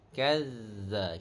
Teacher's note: pada huruf zal bersifat rokhawah, dia tidak boleh terputus